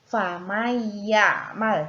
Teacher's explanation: Di sini terdapat huruf nun sukun bertemu dengan huruf ya, maka harus diidghamkan atau dimasukkan.